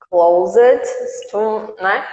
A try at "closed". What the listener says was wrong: não sai isso. Agora tira o E. Não pronuncia o E. Tira o E. Como é que fica? Closed. Então é assim que vai ficar. Não tem o E.